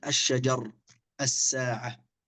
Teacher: لام التعريف في أحرف اللام الشمسية هنا أيضا حكمها الإدغام